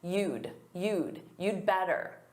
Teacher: the D is so soft that native speakers, we forget it's there. So when we write, we write what we say and it sounds like you better because the contraction is so soft.